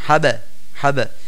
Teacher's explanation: কলকলা করিয়া পড়িতে হয় মানে আওয়াজকে বাড়ি দিয়ে পড়তে হয়